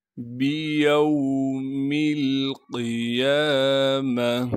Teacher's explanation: میم کو بغیر کھینچے پڑھنا ہے۔ گول تا کو وقف کی حالت میں ہا بنا دیں گے